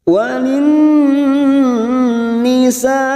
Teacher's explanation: Walin ada nun yang bertasdid, gunnah musaddadah. Kita tahan selama 3 harokat.